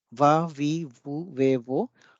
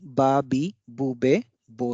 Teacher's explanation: The next rule is replacement of V by B sound. In Japanese, since there is no sound for V and also for bh sound, the nearest sound is assumed to be those of B sound. Hence, va, vi, vu, ve, vo or bha, bhi, bhu, bhe, bho are replaced by ba, bi, bu, be, bo sounds in Japanese.